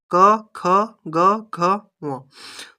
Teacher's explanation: तो क जो 5 जो वर्ण है वो कंठ होगा। उनका उच्चारण कंठ में अवरोध होके या फिर कंठ में स्पर्श होके उनका उच्चारण होता है।